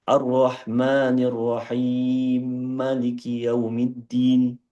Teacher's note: saya baca dengan dua harakat untuk idgham kabir